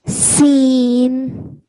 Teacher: When you get to the noon sound, your tongue should be touching the top of your mouth, just behind your front 2 teeth. Just leave it there and stop the sound.